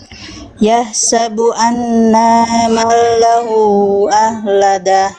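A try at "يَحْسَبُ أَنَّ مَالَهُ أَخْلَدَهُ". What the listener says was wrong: Naknya pendek ya, Bunda ya.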